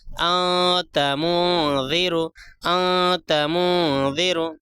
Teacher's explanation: ناک میں چھپا کر غنہ کے ساتھ اخفا کے ساتھ 1 الف کے برابر کھینچ کر پڑھتے ہیں